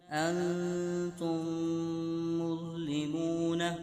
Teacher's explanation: پہلے اخفاء کا غنہ ہو رہا ہے، نون ساکن کے بعد تا آ رہا ہے. پھر ادغام شفوی کا قاعدہ ہو رہا ہے، جیسے آپ نے پڑھا تھا میم ساکن کے بعد دوسری میم آ جائے تو میم ساکن میں ادغام شفوی ہوگا.